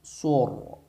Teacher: Ini harus dibaca tafkhim atau dibaca tebal ya, karena huruf ra mati atau sukun. Ra disukunkan setelah dhammah.